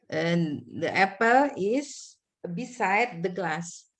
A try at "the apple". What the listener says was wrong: Hati-hati ucapannya the apple. Di apple ya. Di apple. Bukan the ya.